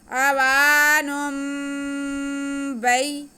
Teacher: آگے با پہ زبر یا ساکن تو یہ یا لین ہو گئی، اس کو کھینچنا نہیں ہے۔